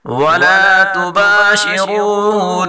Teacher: را کو پر پڑھیں گے اور نون مشدد غنہ کے ساتھ پڑھیں گے